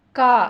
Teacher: நாக்கின் முதற்பகுதி மேல் அன்னத்தில் ஒட்டும்போது க என்னும் எழுத்து பிறக்கிறது